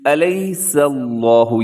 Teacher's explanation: یہاں پر لفظ اللہ سے پہلے سین کے اوپر زبر ہے، تو آپ نے کیا کرنا ہے کہ لفظ اللہ کو موٹا پڑھنا ہے